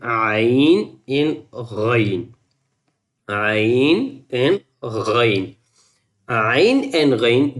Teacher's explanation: ain is from the middle of the throat, and rain from the upper throat. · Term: throat letters